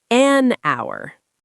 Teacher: Although our starts with H, the H is silent, so the word starts with the vowel sound ow. Therefore, we say an hour.